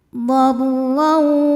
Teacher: Huruf ra dibunyikan secara tafkhim karena ra berharokat di atas yaitu fathah tanwin. Maka ra dibunyikan dengan tebal.